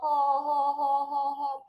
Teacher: 이 후두를 마찰시키면서 허허허허허 발음되는 후.